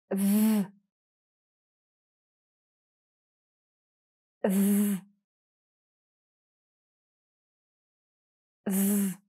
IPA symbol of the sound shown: ð